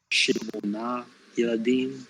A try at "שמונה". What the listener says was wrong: Okay, that's again consonant cluster. Not shemona, but shmona.